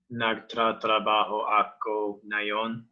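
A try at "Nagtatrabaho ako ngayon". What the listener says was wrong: Nagta. Okay, your first syllable it has to be like one consonant and one vowel. So nagta trabaho.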